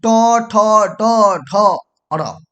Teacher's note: टवर्ग मूर्धा से बोला जाएगा, यानी कि ट ठ ड ढ अर, ये मूर्धा से बोला जा रहा है।